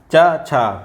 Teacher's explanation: चा छा ये तालव्य ध्वनियाँ हैं, तालु वाली, तालु ध्वनियाँ